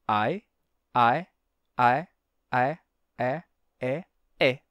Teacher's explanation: o i tem a articulação palatal do I Só que mais aberto como o a o que dá um som de e · ao lado do a que é uma vogal bem aberta o a terminou abrindo o i então o i foi abrindo i e e e e até